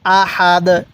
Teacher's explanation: দম ছাড়ার কারণে দালের উপর দুই পেশকে বাদ দিয়ে দিছি